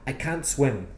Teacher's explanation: And I think it's because most native speakers don't pronounce the T at the end of the negative can't